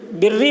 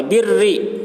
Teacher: جیسے بری، بری میں دیکھیے را کے اوپر تشدید ہے لیکن اس را کے نیچے زیر ہے، اس وجہ سے اس را کو باریک پڑھیں گے